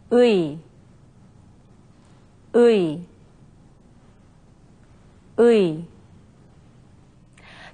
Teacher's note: It's a combination of the vowel sounds ư and 이.